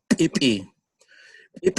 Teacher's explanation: so it's the ejective p that really popping p sound